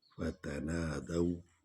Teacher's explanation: دال پر زبر ہے اور وا پر جزم ہے، تو ہم اس کو لین انداز میں پڑھیں گے